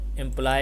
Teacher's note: remember the stress is on the second syllable fly. It rhymes with fly, high, and dry.